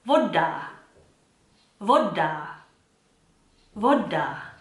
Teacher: In Czech, the circumference of my mouth stays the same, oh, and you get that clean oh sound. And so if we say the word voda, for example, which means water, I don't say it voda, that's incorrect.